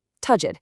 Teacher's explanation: It's a quick light d sound.